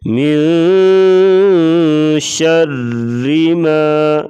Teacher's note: اخفاء یعنی ناک میں آواز چھپا کر غنہ کیا جاتا ہے، اس کو کہتے ہیں اخفاء۔